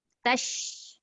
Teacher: kita punya lidah yang tengah itu diangkat ke langit menyebabkan dia ada bunyi tafashi